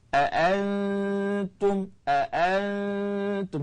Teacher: dengung ikhfa pada huruf Ta ini adalah dengan paling kuat sebab apa Nun dengan ta ni dekat makhraj dia dekat makhraj jadi dia kuat sikit sebab paling dekat aantum